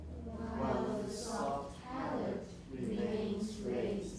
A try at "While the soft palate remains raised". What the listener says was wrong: That was good.